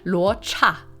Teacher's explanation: This is another one of those like, well, the CH is kind of like a CH in English, but you add an R in it. Luocha, second tone and then fourth tone.